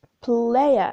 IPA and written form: 'pleɪə (player)